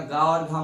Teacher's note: तो क्या गा और घा मूर्धन्य है? नहीं, ये कंठ है।